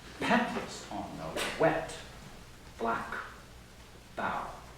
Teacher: the density of those 3 final stressed syllables feels emphatic in itself · little string of unstressed syllables throws us forward into the more semantically charged adjectives and noun concluding the line. So we get petals on a wet, black bough.